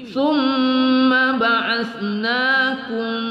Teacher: mim sukun bertemu mim pada idgham mutamassilain bi ghunnah idgham mimi.